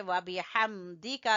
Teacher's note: बा को छोटा पढ़ेंगे, हा को गले से निकालेंगे